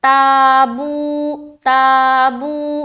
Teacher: آگے تابو تابو, تا الف زبر تا, تا بالکل نرمی کے ساتھ اسے بھی نکالیں گے اور یہ موٹا نہیں کرنا, باریک پڑھنا ہے. تابو تابو, باوا پیش بو, تو تا میں الف مدہ اور بو میں واو مدہ ہو رہا ہے.